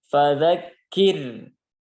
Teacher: sebelum ro ini ada kasroh, maka huruf ro-nya dibaca dengan tipis